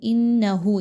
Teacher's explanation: نون مشدد کا غنہ کیجئے، 1 الف کے برابر آواز کو ناک میں لے کر جائیے اور روک کر رکھیے